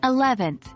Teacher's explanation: eleventh the stress falls on the second syllable